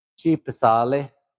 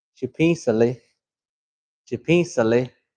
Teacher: Of course, pisa means to look, but when you nasalize it, it becomes to see.